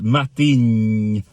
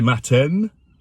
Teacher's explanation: there's no N sound in the Gaelic word. There's no English N sound.